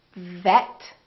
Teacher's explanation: lower lip touches the upper teeth and feel the vibration